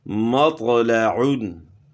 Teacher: طوا کی آواز موٹی اور جھٹکے والی ہوتی ہے